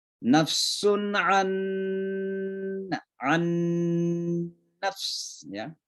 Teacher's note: Jadi ada dua huruf yang sama, huruf pertama mati, huruf kedua berharakat, maka huruf yang pertama itu masuk ke dalam huruf yang kedua. Maka suara nun ini an itu masuk ke dalam suara nun yang kedua. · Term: idgham mithlaim